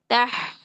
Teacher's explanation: اور دوسرا یہ لا یستحیی، تح، ہاں میں ہمس ہے، ہمس کے ساتھ رخوت ہے. تو اس کا مطلب ہے رخوت کا مطلب ہے نرمی کے ساتھ آواز جاری کرنی ہے